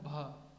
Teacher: भ को बोलने के लिए दोनों ओठ मिल रहे हैं, ओष्ठ ध्वनि हो गई